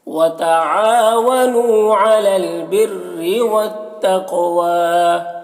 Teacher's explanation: تقوی میں قاف کو پر پڑھیں گے اور قاف میں قلقلہ کریں گے، واو میں کھڑا زبر ہے، اسے ایک الف کے برابر کھینچیں گے